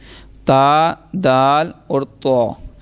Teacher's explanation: زبان کی نوک اور اوپر کے دانتوں کی جڑ سے یہ ادا ہوں گے